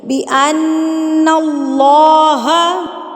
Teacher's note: اللہ لفظ سے پہلے زبر آ گئی ہے تو اللہ لفظ کو ہم موٹا کر کے پڑھیں گے